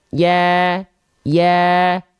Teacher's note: Karena di sini huruf ya ketika berharokat fathah dilafalkan dengan vokal A, tidak dengan vokal O, maka huruf ya termasuk ke dalam huruf yang tipis. Huruf yang tipis yang berharokat fathah dan dia vokalnya adalah A, dilafalkan sambil seolah tersenyum.